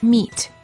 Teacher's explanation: the lips are slightly smiling tense and not rounded and the tongue is tense it is high and far forward near the roof of the mouth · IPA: /i/